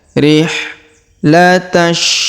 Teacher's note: Huruf ta langsung sambung ke huruf shin yang berharokat tasdid ya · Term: alif lam syamsiyah